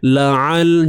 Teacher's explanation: ain sempitkan di bahagian tengah kerongkong. La'al, jangan tertukar dengan huruf hamzah.